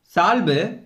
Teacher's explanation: 6 வல்லின உகரங்களும் சொல்லின் இறுதியில் வரும்போது தனக்குரிய ஒரு மாத்திரை அளவிலிருந்து அரை மாத்திரை அளவாக குறைந்து ஒலிப்பது குற்றியல் உகரம்